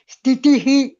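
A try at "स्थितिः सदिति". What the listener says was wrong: ಇಲ್ಲ, ಸ್ಥಿತಿ ನೀವು ಹೇಳಿದ ಉಚ್ಚಾರಣೆ ಸರಿ ಇದೆ, ಬಟ್ ನಾವು ಹೇಳುವಾಗ ಸ್ಥಿತಿ ಸದಿತಿ ಪೂರ್ಣವಾಗಿ ವಿಸರ್ಗ ಕೊನೆಗೆ ಮಾತ್ರ ಉಚ್ಚರಿಸಬೇಕು, ಮಧ್ಯದಲ್ಲಿ ಉಚ್ಚರಿಸಬಾರದು. ಸ್ಥಿತಿ.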